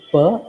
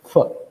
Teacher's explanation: She selected a stop instead of a continuant.